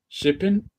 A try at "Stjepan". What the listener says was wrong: Stipan. No, you have to pronounce the T. Yes, but the J is a Y. Stipan. Stipan. The J is a Y, but it's not a vowel. So Stipan.